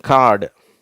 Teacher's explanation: இந்த காடுன்னு ஒலிக்கும் போது, உதடுகள் பரவலாக இருக்கிறது.